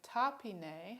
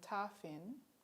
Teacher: all the vowels at the end of a word have disappeared and also the the a voiceless stop has changed to a voiceless fricative